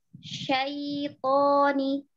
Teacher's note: Syai tipis, to tebal. Jangan syaitoni.